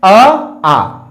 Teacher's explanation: अ जो होता है वो कंठ से बोला जाएगा